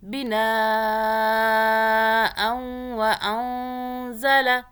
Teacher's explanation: نون کو چھپا کے پڑھیں گے، زبان تالو سے نہیں لگنی چاہیے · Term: اخفاء